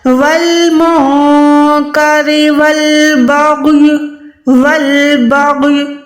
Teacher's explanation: غین کو جب بھی ادا کریں گے حلق کے اوپر والے حصے سے ادا کریں گے اور منہ کو گولائی کریں گے، ٹھیک ہے؟ جب غین کو ادا کریں گے تو آپ نے منہ کو گولائی کرنا ہے، تو انشاءاللہ حروف موٹا ادا ہوگا۔